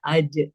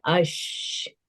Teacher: कि जीम में हमने देखा था कि खलखला है, इसको हमने बाउंसिंग साउंड के साथ अदा करना है अज, और शीन में हमने आवाज को फैलाना है जिसे अश। और शीन में एक और हम्स की भी हमने पढ़ ली थी कि हम्स में भी आवाज फैलती है। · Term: तफशी